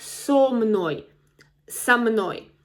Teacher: So again, it's not с мной, but со мной, со мной. So here the cluster again of two consonants, m and n, so it's difficult to pronounce с мной, 3 consonants in a row, so we need to insert some vowel, со мной, поговори со мной.